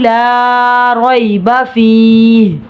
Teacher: رویبا پہ را پر زبر ہے، را پر پڑھا جائے گا۔ یا ساکن سے پہلے زبر ہے، لین ہو رہا ہے، بغیر کھینچے پڑھیں گے۔